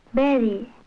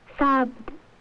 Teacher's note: the speaker uses the nearest sound in her own language, the B for V.